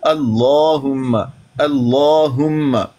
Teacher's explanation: तो लफ्ज़े अल्लाह के लाम को मुफ़ख़म पढ़ा जाता है, मुंह भर के पढ़ा जाता है।